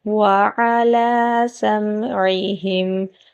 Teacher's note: عین کو باریک پڑھیں گے اور حلق کے درمیانے حصے سے ادا کریں گے